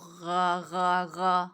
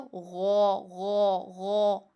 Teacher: جب ہم موٹا کرتے ہیں تو غو غو غو، آگے کو ہونٹ جاتے ہیں. آپ کے ہونٹ آگے کو جانے چاہیے، غو ہونا چاہیے، غا نہیں